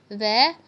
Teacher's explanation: वह का उच्चारण स्थान दांत के ऊपरी हिस्से और होठ के निचले हिस्से से होता है।